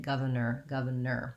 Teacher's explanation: or at the end says the er vowel even though we spell it with or